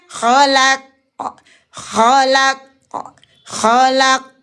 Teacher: lam tidak boleh terpengaruh walaupun dia diapit oleh huruf-huruf yang kuat tapi dia tetap tarqiq